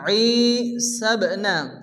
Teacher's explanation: ই মধ্যে আলিফ টেনে পড়তে হবে বা সাকিন কলকলা হবে